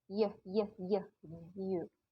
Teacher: Oke, palatal itu kayak you, dia bagian depan lidah, front of the tongue body, you. Pasif artikulatornya yang tidak bergerak adalah hard palate atau langit-langit keras.